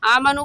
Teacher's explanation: ایسے کہیں گے بأنہم آمنو کو کیوں کھینچ رہے ہیں ہم؟ کیونکہ واو ساکن سے پہلے پیش آ گیا تو واو مدہ، اور واو مدہ کو 1 الف کی مقدار کھینچتے ہیں